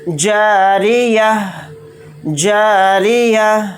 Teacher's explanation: تو یہاں پر گول تا آ گیا، تو گول تا کی جگہ ہم ہا ساکن کی آواز نکالیں گے آیت کرنے کی حالت میں۔